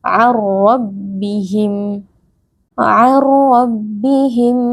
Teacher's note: nun sukun bertemu dengan huruf ro hukumnya adalah idgham Bila Ghunnah kita memasukkan Nun ke dalam ro tanpa berdengung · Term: idgham bila gunnah